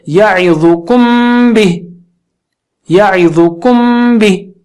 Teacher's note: جب میم ساکنہ کے بعد با آئے تو اس وقت میم کو غننے کے ساتھ پڑھیں گے، یعنی ناک سے آواز نکالیں گے 2 حرکت سے. کیوں کہ میم اور با دونوں ہونٹوں سے نکلتے ہیں.